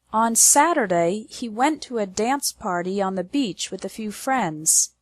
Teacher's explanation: The stress is on the words Saturday, went, dance, party, beach, and friends. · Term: strong words